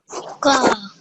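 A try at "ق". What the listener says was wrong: Try and make it a little bit heavier. Qaf.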